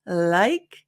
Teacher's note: the tongue tip lightly touches the upper front teeth. So it can either be here, but you'll notice as we do more examples, sometimes it's a little bit behind.